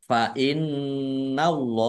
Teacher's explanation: nun tasdid dibaca gunnah atau mendengung, ditahan biar tampak dengungannya